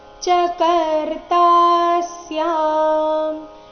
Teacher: ಕರ್ತಾ ನಲ್ಲಿ ತಾ ದೀರ್ಘ ಬಂದು ಸೌಮ್ಯ ಆಘಾತ ಮುಂದೆ ಸ್ಯ ಸಂಯುಕ್ತ ಅಕ್ಷರ ಇದ್ದ ಕಾರಣ.